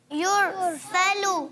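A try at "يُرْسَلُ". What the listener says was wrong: یرسلو. آپ نے تھوڑا سا لام کے پیش کو کھینچ دیا تھا، یرسلو علیکما، تو غلطی ہو گئی تھی. تو حرکات کو نہیں کھینچنا، اس چیز کا خاص خیال رکھنا ہے.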